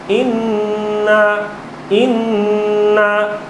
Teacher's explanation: ایک الف کی مقدار ناک میں لے کے جاؤں گا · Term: گنہ